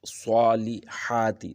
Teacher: صا کو بھی تھوڑا سا کھینچنا ہے، ہا کو بھی کھینچنا ہے